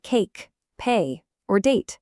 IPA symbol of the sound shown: eɪ